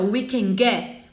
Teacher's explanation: você não precisa pronunciar o T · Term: connected speech